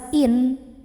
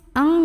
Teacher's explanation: Wa in, ada hukum ikhfa ab'ad karena ada nun sukun yang ketemu sama huruf kaf. Maka cara membaca nun sukunnya ini adalah samar-samar menuju huruf kaf sambil dengung. Nah, artinya nunnya tidak kita baca jelas in, tapi ang ya.